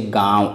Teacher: अनुनासिक के उच्चारण हेतु नाक से बहुत कम सांस निकलती है तथा मुंह से अत्यधिक श्वास निकलती है